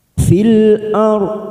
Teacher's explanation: Fil masuk kata al-khamariyah, fil ar. Ora sukun kita baca tafkhim karena didahului fathah